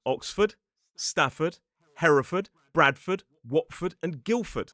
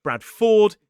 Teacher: when it's a suffix, we commonly pronounce this one as /fəd/. So it's /f/, and again there is a vowel reduction to a schwa.